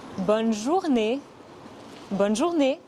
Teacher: le son et à la fin du mot journée est similaire au son a en anglais mais en plus court · ce n'est pas bon mais bonne ce n'est pas une voyelle nasale le son et à la fin du mot journée est similaire